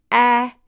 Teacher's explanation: a is a front and low vowel